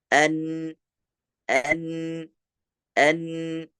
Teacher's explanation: huruf nun itu tidak keluar berdempetan, keluar juga dari bagian lidah, tetapi lebih dominan keluar daripada bagian hidung. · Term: sukun